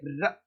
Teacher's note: जिन व्यंजनों के उच्चारण में है जिह्वा को 2-3 बार कंपन करना पड़ता है उसे कहते हैं प्रकंपित व्यंजन। और आपका प्रकंपित व्यंजन जो है वो आपका है र।